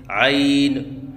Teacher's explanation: بعض بچے عین کی ادائیگی کے وقت آخر میں نون کے اوپر قلقلہ کرتے ہیں، یہ غلط ہے، جیسے عین۔